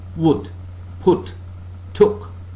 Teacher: part of a tongue nearer to center then to back is raised just above the half closed position the tongue is lexically held no firm contact being made between